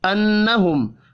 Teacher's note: نون اور میم مشدد ہیں، دونوں پر غنہ کریں گے